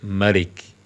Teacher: Bukan Malik dengan mim yang panjang tapi mim yang pendek